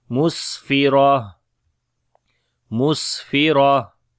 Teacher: Only we read ha with sukoon and hams quality.